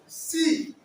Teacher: सी तालू पर जोर पड़ रहा है, जीभ जो है ना तालू में जा रहा है